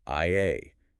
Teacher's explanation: No trailing consonants, no hard sounds, just the two pure vowels, I A.